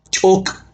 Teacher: Cho, using a glyph in the shape of a mouse head, uses a glottalized consonant pronounced with a tense release. Ko closes the word.